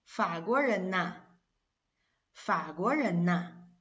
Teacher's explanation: if it's an n, of course, this is simple, and it will change to na